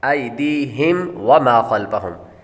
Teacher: ہم پر غنہ نہیں کریں گے، میم ساکن کے بعد با اور میم کے علاوہ کوئی اور حرف آ جائے تو غنہ نہیں کریں گے۔ وما خلفہم، خا حروف مستعلیہ میں سے ہے اس لیے اس کو پر پڑھیں گے۔